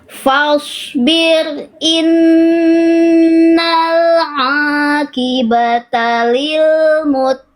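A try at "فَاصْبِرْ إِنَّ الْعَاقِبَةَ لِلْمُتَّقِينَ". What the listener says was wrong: Keren, Masya Allah.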